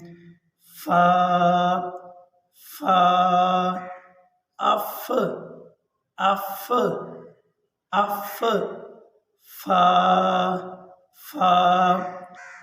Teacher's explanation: فا کو ادا کرنے کا طریقہ یہ ہے کہ اوپر کے ہونٹ نیچے والے ہونٹوں کے قریب آتے ہیں اور اوپر والے، سامنے والے یہ دانت نیچے والے ہونٹوں کے تری والے حصے سے جب جا کے ٹچ کرتے ہیں تو اس سے فا ادا ہوتا ہے۔ ابھی ہم پڑھتے ہیں فا، فا، اف اف اف فا فا امید کرتا ہوں کہ آپ حضرات کو یہ مخرج سمجھ آیا ہوگا.